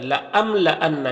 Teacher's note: لَأَمْلَأَنَّ، یہاں پر میم میں اظہار شفوی ہوگا تو میم کو ظاہر کر کے جلد پڑھیں گے